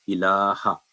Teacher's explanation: आ की आवाज़ 1 सेकंड होगी